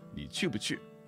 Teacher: The 不 or 不 actually becomes a fifth tone because it's just too quick. It doesn't have time to put a tone in there.